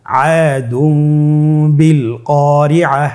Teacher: তানবিনকে মিম দ্বারা পরিবর্তন করে গুন্না সহিত পড়ব